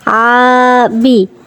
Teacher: হারকাতের উচ্চারণ তাড়াতাড়ি, বি টানা যাবে না